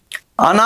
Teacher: ఆ అన అనేది మూర్ధన్యానునాసికం మూర్ధన్యానునాసికం